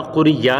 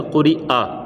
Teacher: کھینچنا، یہاں پر قری یا نہیں کرنا بلکہ قری آ، یعنی یہ یا زبر یا نہیں بلکہ حمزہ زبر آ ہے